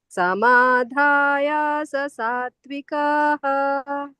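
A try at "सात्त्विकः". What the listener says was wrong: ಸಾತ್ವಿಕಃ ದೀರ್ಘ ಇಲ್ಲ ಇಲ್ಲಿ.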